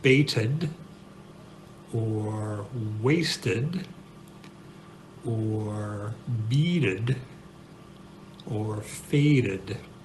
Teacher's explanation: And we learned that words that end with a t sound, t, or a d sound, d, when you add an ed or a d, if it already ends in an e, then the sound that you get at the end of the word is an ud, which is basically schwa plus d